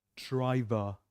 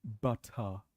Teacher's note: So R changes, R is silent basically. We don't pronounce it.